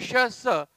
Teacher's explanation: जीभ आणि टाळू यांच्यामध्ये हवेचं घर्षण होऊन उष्णता निर्माण होते म्हणून त्यांना उष्मे म्हणतात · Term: उष्मे किंवा घर्षक